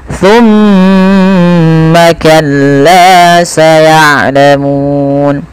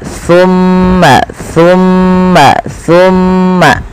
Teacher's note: Pada lafal thumma di sini ada bacaan yaitu kita namakan dengan gunnah, yaitu adanya mim berharakat tasydid